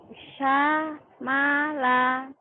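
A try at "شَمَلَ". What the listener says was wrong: Shin. Nah, yang belum keluar itu shin. Sya ya. Sya. Syamala.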